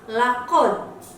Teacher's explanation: ini adalah bacaan Qalqalah jadi dia akan dipantulkan namun tidak menambahi hurufnya